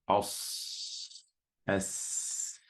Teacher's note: there's a very narrow passageway in your mouth, which makes the sound very sharp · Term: al-safir